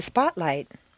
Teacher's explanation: stress the first word of each phrase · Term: set phrases